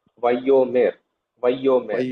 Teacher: you have to stress yod because there is dagesh forte